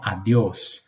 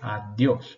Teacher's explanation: la D antes de la I es siempre seca. Hay que subir entonces la lengua atrás de los dientes superiores.